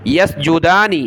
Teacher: دال کے اوپر کھڑا زبر ہے، ایک الف کی مقدار اس کو اوپر کی طرف کھینچیں گے